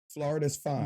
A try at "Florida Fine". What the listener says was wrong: Florida Fine. Florida Fine. Florida Fine. You said Flora does with an S.